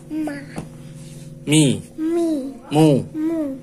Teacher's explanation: Huruf mim makhrajnya sini merapatkan dua bibir.